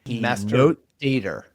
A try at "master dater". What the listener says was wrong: Dater, yeah, enunciate the D. Master dater.